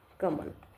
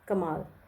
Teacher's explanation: ਕਮਲ ਜਦੋਂ ਆਪਾਂ ਉਚਾਰਨ ਕਰਦੇ ਆ ਤਾਂ ਬਹੁਤ ਘੱਟ ਸਮਾਂ ਲੈਂਦਾ ਕਮਾਲ ਦੇ ਵਿੱਚ ਉਚਾਰਨ ਦੇ ਵਿੱਚ ਵੱਧ ਸਮਾਂ